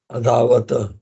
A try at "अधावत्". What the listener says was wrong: अधावत नहीं, अधावत, see that is the last one, last is a ta halant, ta halant है ना वो, आप समझे मैं क्या बोल रहा हूं?